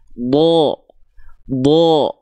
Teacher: Huruf bod itu termasuk ke dalam huruf yang tebal. Ketika huruf bod dia berharokat baris atas atau fathah, maka dia akan kita dengar seperti vokal O. Bo, bukan da.